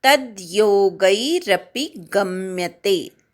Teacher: तद्मधल्या त वर आघात, गम्यते मधल्या ग वर आघात